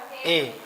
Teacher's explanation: अब ए का उच्चारण स्थान देख लीजिए, ए का क्या है, कंठ और तालु